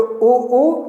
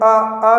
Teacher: उ वृत्ताकार हो जाता है उ, लेकिन जब आ बोलेंगे तो अवृत्ताकार हो जाएगा